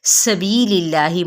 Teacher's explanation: اور اس میں جلالہ کیا ہے وہ باریک ہو جائے گا